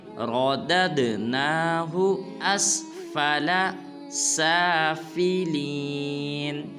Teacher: بعض مسلمان پڑھتے ہیں راددناہو، یعنی کہ را کو لمبا کر دیتے ہیں۔ را کو لمبا ہرگز نہیں کرنا، را کو پر ادا کریں گے · را کو لمبا ہرگز نہیں کرنا، را کو پر ادا کریں گے۔ اس کے بعد جب دال کو آگے دال ساکن کے ساتھ ملائیں گے تو قلقلہ کریں گے